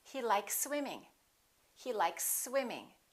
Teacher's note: you can prolong the S a little bit but don't pause don't interrupt the sound and don't break the two words